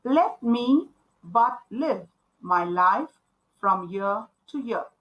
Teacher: so if you see there are 10 syllables and every second syllable is stressed so this is what means by iambic penta meter let's see